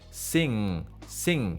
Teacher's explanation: if I say the word sing on the NG the last part of the sound it has to be nasal